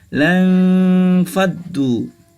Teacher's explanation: Lang faddu, nun sukun bertemu dengan fa, juga ikhfa, maka dibaca dengung